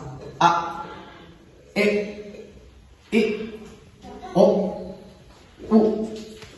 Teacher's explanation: Con las vocales glotalizadas. A, E, I, O, U. Como que se corta